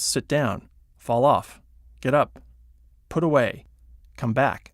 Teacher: They tend to be stressed on the second word